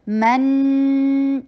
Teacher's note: میم کو شارٹ رکھتے ہوئے نون کے اوپر 2 حرکہ غنہ کریں گے اور جو اس کے اوپر فتحہ ہے وہ شارٹ ہوگی من